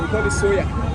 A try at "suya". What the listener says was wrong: Why you call it soya? It's suya. Suya. It's suya. Suya.